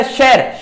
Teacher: ਸੁਰ ਦੀ ਅਹਿਮਤਾ ਹੋਣ ਕਾਰਨ ਜਦੋਂ ਅਸੀਂ ਉਚਾਰਦੇ ਹਾਂ, ਜਿਵੇਂ ਸ਼ਬਦ ਮੈਂ ਪਹਿਲਾਂ ਵੀ ਸਾਂਝਾ ਕਰਿਆ ਹੈ, ਸ਼ਹਿਰ ਸ਼ਬਦ ਬੋਲ ਕੇ ਵੇਖੋ, ਲਿਖਦੇ ਤਾਂ ਅਸੀਂ ਸ਼ਹਿਰ ਹਾਂ, ਜਿਵੇਂ ਸ਼ੈ ਹੈ ਦੇ ਸਿਆਰੀ ਦੀ ਲੱਗ ਲਾਉਨੇ ਹਾਂ, ਸ਼ਹਿਰ ਬੋਲਿਆ ਕੀ ਜਾਂਦਾ ਹੈ, ਸ਼ਹਿਰ। ਸ਼ਹਿਰ ਹੈ ਜੋ ਐ ਵਿੱਚ ਬਦਲ ਰਿਹਾ ਹੈ। ਸੋ ਇਹ ਬਿਲਕੁਲ ਕਿਸ ਦੇ ਨੇੜੇ ਦਾ ਹੈ, ਸਵਰਾਂ ਦੇ ਨੇੜੇ ਦਾ ਹੈ। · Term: ਸੁਰ ਯੰਤਰੀ ਧੁਨੀ